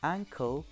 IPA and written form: ˈæŋkl (ankle)